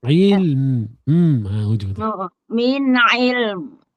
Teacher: Min matikan mim min ilm. Kena tutup mulut kan?